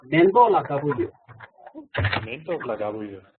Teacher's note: Although it's written mentok, but there is a liaison going on, so it becomes a nasal sound